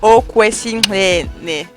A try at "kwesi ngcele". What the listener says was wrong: Yeah, your clear is like clear, but it actually should be ngce. Like ngce. Like, you know when you like at somebody, like clicking your tongue at somebody. The attitude. It's like kwesi ngcele.